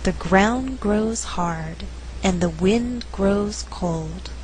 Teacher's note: in this slower reading all content words are stressed they are ground grows hard wind grows cold